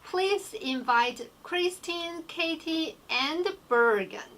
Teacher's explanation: when you have at the last one, you are going to have the falling intonation. · And then when you have the list, make sure usually when you do the list, you have like a rising, and the falling intonation at the end.